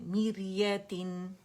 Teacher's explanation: را سکون سے پہلے ہمارے پاس کسرہ آ رہی تو باریکی سے پڑھ جائے